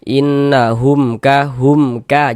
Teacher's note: Maka berarti ini hukumnya izhar syafawi. Nah, maka dibaca jelas mim sukunnya. Kemudian tidak didengungkan. Baca pendek saja. · Jangan dibaca hum dipanjangkan begitu, jangan, salah ya, pendek saja. Hum ka, seperti itu.